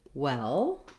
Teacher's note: try just the word well. That has the red tent vowel, sounds like eh.